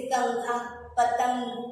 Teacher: अनुस्वार में क्या होता है, आवाज नाक से आती है।